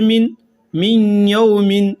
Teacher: یہاں نون ساکن کے بعد یا آ رہا ہے تو غنہ کے ساتھ ادغام کریں گے، یعنی تھوڑی سی آواز ناک میں ہوگی۔